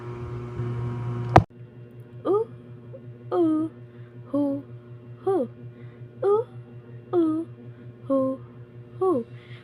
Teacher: When you say oo, your tongue is up at the back of your mouth, while your lips are rounded like a small circle.